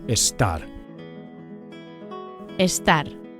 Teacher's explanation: Make sure you emphasize the second syllable, the AR, the last syllable.